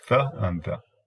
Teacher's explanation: the th is called an interdental sound, interdental or lingua dental, two names